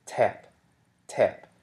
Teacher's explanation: in front of your mouth and you pronounce the word tap you'll feel a flow of air after the T sound tap tap and this you know that you're aspirating that sound